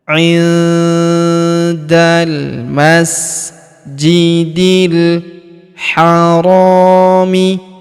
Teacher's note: huruf ra kita panjangkan 2 harokat karena terdapat alif di depannya